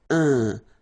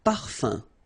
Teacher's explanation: So it's nasal and it's un. So it really goes in your nose. You don't pronounce the M at all.